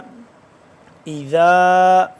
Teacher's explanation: ذال الف مد زبر، ذا 2 سے 3 الف کے برابر اس کو ہم لمبا کریں گے ، اور ذال کو نرمی سے پڑھیں گے، زبان کی نوک